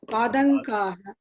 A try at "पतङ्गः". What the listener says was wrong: not padanga, it is patangaha. Patangaha not padangaha, don't make it da, it is not da, it is ta. Patangaha.